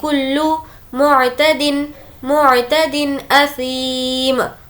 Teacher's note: آواز کو اچھے سے ظاہر کر کے پڑھیں گے کیونکہ یہاں پر حرف حلقی اظہار کا قاعدہ ہے